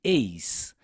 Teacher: última sílaba há o que nós chamamos de ditongo decrescente eis ditongo porque temos dois sons vocálicos na mesma sílaba